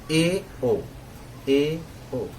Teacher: अर्ध संवृत में है ए, ओ, मुंह इसमें आधा बंद रहेगा